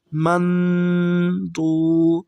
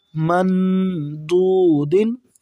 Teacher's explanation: آگے ہے جی میم، نون زبر من، ضاد۔ دیکھیں ضاد بھی حروف اخفا میں سے ہے، یہاں پہ ہم نون ساکن پر غنہ کریں گے۔